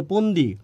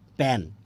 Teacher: ফন্দিরে বলে পন্দি ফ্যানেরে বলে প্যান